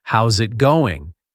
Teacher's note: Native speakers almost never say how is it going. We blend the words together. · The S from how's links to the I in it. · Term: connected speech